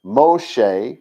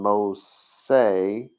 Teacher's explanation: the change of that is the fact that Greek didn't have an sh sound